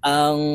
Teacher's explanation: নুন সাকিনের পরে ইকফার হরফ কফ আসছে, তাই এই নুনকে নাকের ভিতরে লুকাইয়া গুন্নার সহিত পড়ব